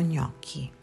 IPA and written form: ˈɲɔkki (Gnocchi)